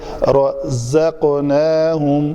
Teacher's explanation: یہ جو بز کی آواز آتی ہے نا، یہ ضرور آنی چاہیے.